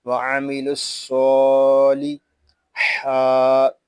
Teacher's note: یہاں الف اور لام یہ نہیں پڑھے جا رہے اور واو بھی نہیں پڑھا جا رہا، ہم لام کو صاد کے ساتھ ملا کر پڑھیں گے